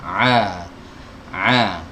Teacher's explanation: in the Hai huruf Ain ya keluar dari tadi ya sudah dari katup epiglotis dari tenggorokan bagian tengah